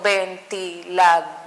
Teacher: en dor cae mi sílaba tónica